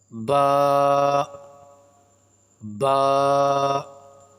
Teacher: با کا پڑھنے کا درست طریقہ یہ ہے اپنے دونوں ہونٹوں کو آپس میں ملا کر جو آواز نکلے گی اس سے با ادا ہوگا